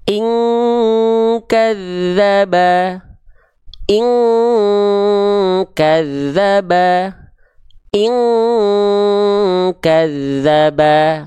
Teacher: Jadi kalau nun sukun atau tanwinnya berjumpa dengan huruf qaf ataupun huruf kaf, oke, dia dengungannya mendekati eng. · dia dibaca mendekati seperti bunyi dengungan kekuatan eng, dengungan eng atau samar dengung eng. Ketika nun sukun atau tanwinnya berjumpa hanya dengan dua huruf saja. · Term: dengungan yang kuat